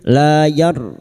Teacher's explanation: ra sukun yang didahului fathah dibaca tafkim